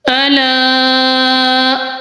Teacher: الا، جی ادھر الف مدہ کا قاعدہ ہو رہا ہے اور مد کا، تو ہم لام کو 3 الف کی مقدار میں لمبا کریں گے